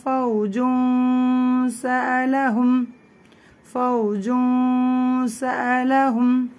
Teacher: மூக்கில் மட்டும்தான் அந்த நூனை சொல்கிறதுக்கு நம்ம ட்ரை பண்ணுவோம். சத்தம் வந்து மூக்கில் வரும், ஆனால் வாய் வழியாகவும் கொஞ்சம் கடத்தப்படும், அதனால அது ரொம்ப லைட்டாக கேட்கும். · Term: லைட் குன்னா